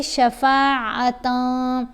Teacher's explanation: ہم نے نون کی آواز کو پھر ناک میں چھپا کر بھی پڑھنا ہے اور ایک الف جتنا ٹھہر کر پڑھنا ہے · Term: احفا